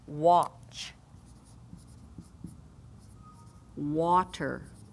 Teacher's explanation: Quantity, quad. Again, the QU and the W makes the A sound more like a short O, aw. · We know that A, letter A, can be A as in apple or A as in apron. But quite often when it's preceded by a W or QU, it becomes more like an aw sound, octopus aw.